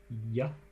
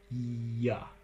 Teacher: You put the body of your tongue, ya, up here on the alveopalatal ridge, and then it sort of moves down and maybe a little bit back. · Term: y sound